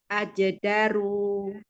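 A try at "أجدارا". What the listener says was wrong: Ajedaro. Nah, roknya yuk tebalkan. Ajedaro. Roknya, rongga mulutnya dibuka. Ah, ro. Ro. giginya abang nggak boleh ketemu. Ro. Ah, digeser-geser, Bu. Ininya jangan geser. Ro. Ro.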